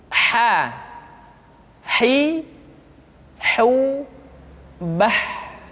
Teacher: huruf ha dikeluarkan dari tengah-tengah tenggorokan